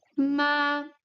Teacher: we have seen the first tone it's high it's long and it's stable on the high tone